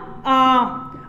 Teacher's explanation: और विवर्त में क्या होता है? मुख पूरा खुला होता है। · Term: विवर्त स्वर